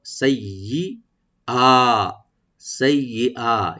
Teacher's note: সাইয়্যাতিকুম সাটা কম রাখবেন, ইয়াটাকে ডাবল করে সাইয়্যা, সাইয়্যা, ইয়াটাকে রাইট দিবেন, হামজা তাকে অবশ্যই রাইট দিবেন, আর হামজাকে একা টানবেন।